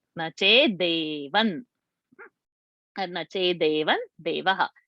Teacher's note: The comes in a ta varga, ta, tha, the, and the fifth alphabet is called Anunasika, na. So the Anuswara has to be pronounced as na.